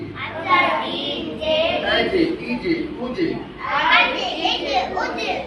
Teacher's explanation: நாவின் நடுப்பகுதி மேல் முரசோடு இணையும் போது ஜீம் என்ற எழுத்து வெளியாகிறது.